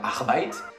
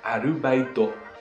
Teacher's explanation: ils rajoutent des voyelles au milieu. Ce qui fait qu'au final, un mot comme Arbeit, travailler en allemand, devient Arubaito, qui est le mot en japonais pour désigner un travail étudiant.